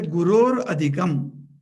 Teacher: the visarga, if it is followed by a or any of the vowels, it becomes ir, that is ref, as it is called.